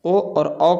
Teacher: ओ और औ का उच्चारण कंठ और ओठ की सहायता से होता है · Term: कंठ्योष्ठ्य